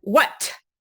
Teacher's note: the release or the aspiration meaning that airflow continues after you make the articulation of a t sound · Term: release T